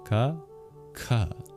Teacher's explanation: a Sanskrit speaker will be able to tell the difference, that the second one is aspirated. The first one is not.